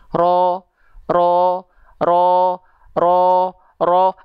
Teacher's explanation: maju mulutnya mencucu mulutnya Apakah huruf tebal itu ketika bervokalkan o dibaca tebalnya itu dengan cara memonyongkan memuncungkan memajukan memanyunkan mulut